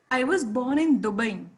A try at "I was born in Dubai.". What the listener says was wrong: Correct. I was born in Dubai, not in Qatar or anywhere else.